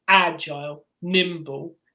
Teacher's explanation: They're both trochaic, so they have a stress on the first syllable, not the second.